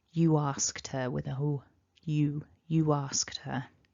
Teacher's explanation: in this ooh and then we've got a vowel immediately afterwards we can have this tiny intrusive or linking w that pops up